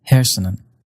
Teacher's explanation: Many speakers pronounce words like hersenen with a slight N at the end